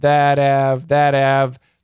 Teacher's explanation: the a is there but the h isn't